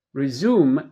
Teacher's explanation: The stress is on the second syllable.